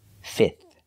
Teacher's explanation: We do not have to pronounce the F in the middle, just 3 sounds, f, I, and the last TH, like thank you, fifth.